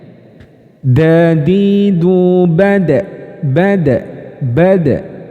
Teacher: Dal itu kayak mantul karena dia juga memiliki sifat yang namanya Qalqalah